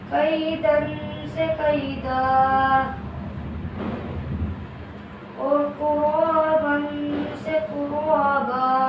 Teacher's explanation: مد عوض کا یہ قاعدہ ہے کہ جس کلمے کے آخر میں 2 زبر والی تنوین پر وقف ہو تو تنوین کو الف سے بدل کر ایک الف کے برابر کھینچ کر حرف مدہ کی طرح پڑھیں گے